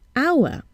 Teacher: We see an H, but we hear a vowel sound at the beginning